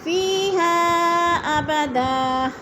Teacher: ہا ابدن میں مد منفصل ہے، 4 الفی مد ہے، اس کو 4 الف کے برابر ہم نے کھینچ کر پڑھنا ہے۔